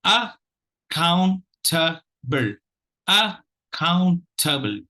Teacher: The second syllable takes the accent, and that's because the maximum number of sounds are there.